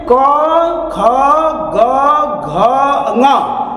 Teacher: क वर्ग में क, ख, ग, घ, ङ, ये जितने 5 लेटर है यहां से बोले जाते हैं कंठ से